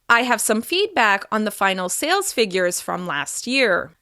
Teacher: As you can hear my pitch is rising and then falling at the end of that sentence. This signals that my idea is complete. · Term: falling intonation